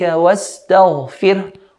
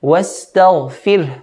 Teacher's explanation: وَاسْتَغْفِرْ, غَيْن heavy, ra light.